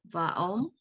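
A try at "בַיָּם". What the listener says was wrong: There's a yud there. Yam suf is the C, so vayam. No, it's not a vowel. It's leftover. It's a leftover from I'm not sure where.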